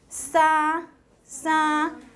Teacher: Tone 1 is a high level tone, and you can write it as 5-5.